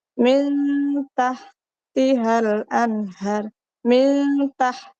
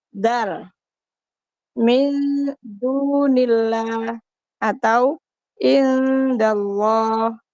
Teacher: di mana Nun ini dibaca samar Ifa Hakiki benar-benar samar ya nunnya itu dibaca samar di mana kita membaca huruf nun itu lidah kita sudah siap-siap ke huruf berikutnya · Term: Ikfa